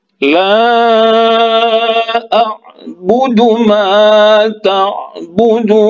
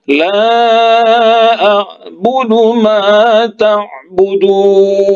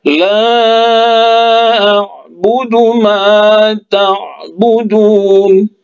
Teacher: Ini ada mad tabi'i waw 2 harkat, ya. Nah, karena dia di akhir kata, maka boleh 2 harkat, boleh 4 harkat, atau boleh 6 harkat cara membacanya kalau dia wakaf di sini. Tapi kalau wasol dia cukup hanya 2 harokat saja, ya.